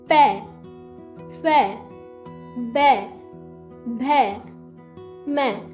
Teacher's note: हमारे जो दोनों होंठ है वो आपस में मिलते हैं। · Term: ओष्ठ वर्ग